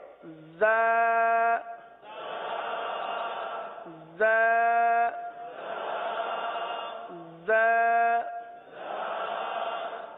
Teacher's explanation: زبان زیادہ تر نیچے کی جانب رہتی ہے اور نیچے کی جانب رہ کر زا سیٹی کی آواز کی طرح اس حرف کی آواز نکلتی ہے · زا یہ زبان کی نوک اور دونوں دانتوں کے اندرونی کنارے سے ادا ہوتے ہیں